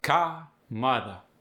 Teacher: When we're talking upper class Massachusetts, the R is non-rhotic, meaning we're losing it. Car and mother become car, mother.